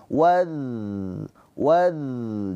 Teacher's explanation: huruf dza mempunyai sifat rakhawah. Rakhawah itu mengalir suaranya. Wad waz. Jadi jangan tertahan.